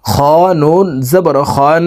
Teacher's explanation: তো এখানে দেখুন হরকতের বামে নুনের উপরে তাসদিদ আছে এই কারণে এই খ হরফ তাসদিদওয়ালা নুনের সাথে নাকের বাসি থেকে 3 সেকেন্ড পরিমাণ গুন্নাহ করে ধরে রাখবো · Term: ওয়াজিব গুন্নাহ